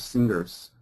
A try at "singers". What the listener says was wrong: No G. No, in America, no G. Singers.